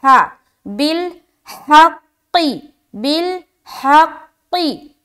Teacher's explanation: आगे बिलहक़ी, बालाम ज़ेर, बिल, हा काफ ज़बर हक़, काफ ज़ेर की, बिलहक़ी। अब हा को कहाँ से निकालना है, बिल्कुल सीने की तरफ से